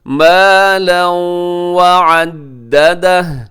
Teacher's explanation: جمع، الذی جمع مالا وعددہ، مالا، یہاں پہ ادغام ہو رہا ہے، تنوین کے بعد واو ہے، حروف یرملون میں واو بھی شامل ہے، اب یہاں ادغام کرتے ہیں لیکن غنے کے ساتھ